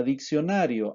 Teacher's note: En la palabra diccionario hay 4 sílabas, la tónica es na y las átonas son las destacadas.